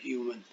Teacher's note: ह्यू जोर से बोला जाता है